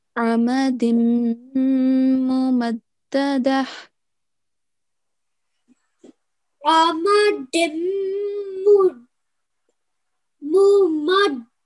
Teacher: And what that means is that when we join the dal into the meem mushaddad, we make a 2-second nasal sound. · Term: partial assimilation